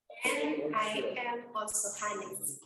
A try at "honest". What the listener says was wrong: Bukan honest. Huruf H-nya nggak dibaca. A. Honest.